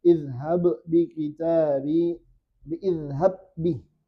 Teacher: Ba sukunnya tidak perlu lagi dikolkolah. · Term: idgham mutamathilain